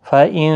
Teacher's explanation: نون ساکن کے بعد حروف اخفا کا آیا ہے، اخفا حقیقی ہوگا، گنہ کے ساتھ پڑھیں گے